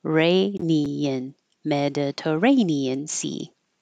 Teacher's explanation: This T changes to a D.